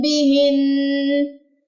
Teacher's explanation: وقف کی صورت میں نون مشدد کا غنہ ہوگا